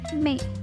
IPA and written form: meɪ (May)